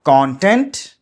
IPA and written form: ˈkɑːn.tent (Content)